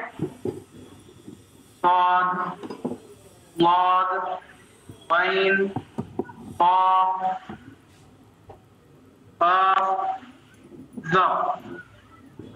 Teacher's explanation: अरबी में कुछ हुरूफ ऐसे हैं जिनके अदा करते वक्त हमारे मुंह में जुबान जो है हमेशा बुलंदी पर होती है, ऊंचाई पर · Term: मुस्तालिया